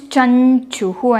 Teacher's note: So chum is there and followed by cha. So the anuswara gets converted to the nasal sound of cha, which is nya.